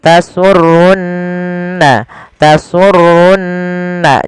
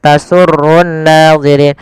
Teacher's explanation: ada nun berharakat tasdid maka ia kita baca dengan bacaan gunnah, ditahan suara nunnya. Tasurrunna, tasurrunna, jangan langsung tasurrun nazirin, tapi tahan dulu.